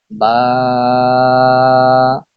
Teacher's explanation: দুই ঠোঁটের ভিজা জায়গা হইতে উচ্চারিত হয় বা